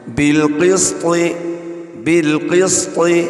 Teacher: کوشش کرنی چاہیے قاف کو پر پڑھیں اور طا کو بھی پر پڑھیں، مگر جو بیچ میں سین ہے اس کو پر نہیں پڑھنا، اس کو باریک سیٹی کے ساتھ پڑھنا ہے۔